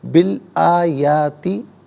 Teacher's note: درمیان میں سے الف یعنی حمزہ کو حذف کریں گے، بالآیاتی پڑھا جائے گا۔